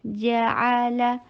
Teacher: فتحہ کے لیے جبڑے کو کھولنا ہے اور عین حلق سے ادا